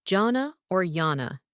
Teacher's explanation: And keep the stress on the first syllable